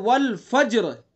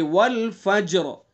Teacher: تو را ساکن ہو گئی، را سے پہلے جیم ساکن ہوا، اور جیم سے پہلے فا کے اوپر زبر ہوا، تو اس لیے را کیسی ہوگی؟ پر ہوگی